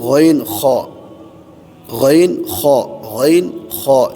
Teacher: تیسرا مخرج ادنائے حلق، حلق کا وہ ابتدائی حصہ جو منہ کی طرف ہے